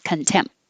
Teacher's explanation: But if I just say contempt, I'm closing my lips for the M, and that's it. No opening for the P or the T, just hold it.